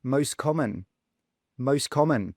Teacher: we don't say the T. We just say most common.